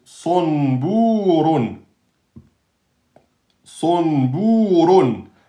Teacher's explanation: sad, c'est emphatique, et le ra est emphatique.